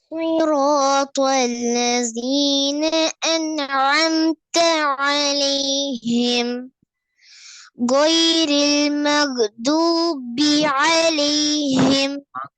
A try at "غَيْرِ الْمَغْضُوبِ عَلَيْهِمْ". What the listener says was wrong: மகுன்னு கலக்கப்படாது. மக்தூபி. மகு மகு என்று கலக்கினா பிழையே. வா கலக்க இயலாது. வாட சவுண்ட் வானத்தை நோக்கித்தான் வரணும்.